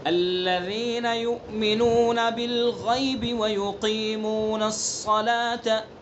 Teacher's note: قاف کی صفات کا خیال کرنا ہے، پر کرنا ہے، اس کو منہ بھر کے پڑھنا ہے. اگر ہم نے اس کی صفت کا خیال نہیں کیا تو یہ باریک بن جائے گا، کاف بن جائے گا، لحن جلی غلطی ہو جائے گی.